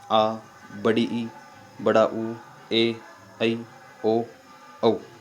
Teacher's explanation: दीर्घ स्वरों में ह्रस्व स्वर से 2 गुना समय लगता है।